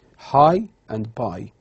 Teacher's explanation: these diphthongs is from low towards high front